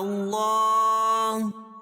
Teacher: اللہ کا لام موٹا پڑھا جائے گا کیونکہ اللہ کے لام سے پہلے زبر یا پیش ہو تو اللہ کا لام پر پڑھا جاتا ہے.